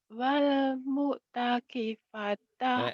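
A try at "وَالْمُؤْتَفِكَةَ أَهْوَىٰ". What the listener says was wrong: salah salah salah salah terbalik. Wal mu'tafikata ahwa. Wal mu'tafikata ahwa.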